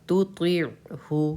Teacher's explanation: عین پہ قلقلہ کسی قیمت پہ نہیں کرنا ہے